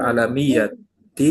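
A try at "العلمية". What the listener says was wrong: ilmiyah ya ini bukan alamiah.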